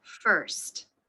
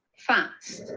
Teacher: But in British English, the R sound isn't included.